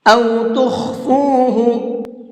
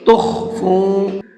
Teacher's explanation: یہاں پر یہ خا ہے، اس کو منہ بھر کے پڑھیں گے، تخفو نہیں پڑھیں گے بلکہ تخفو۔